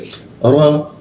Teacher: mulutnya a tapi keluarnya o. Posisinya di bawah hidung.